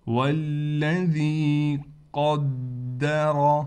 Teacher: والذی، لام پر تھوڑا ٹھہراؤ کریں گے، اس واو کو اس لام سے ملا دیں گے، اور ذال کے بعد یا ہونے کی وجہ سے ذال کو ایک الف کی مقدار کھینچیں گے۔ والذی قدر، قاف کو بھی موٹا کریں گے، دال پر تشدید ہونے کی وجہ سے تھوڑا ٹھہراؤ کیا جائے گا، اور را کو بھی ہم موٹا کر کے پڑھیں گے